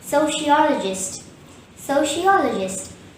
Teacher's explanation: third syllable all is stressed and there is 1 schwa in this word. Therefore, the correct pronunciation will be sociologist.